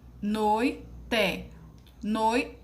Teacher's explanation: sílaba mais forte que você fala com mais intensidade então ela será paroxítona